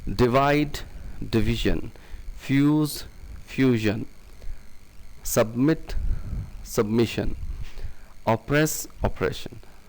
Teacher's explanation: so the tongue tip consonants become palatal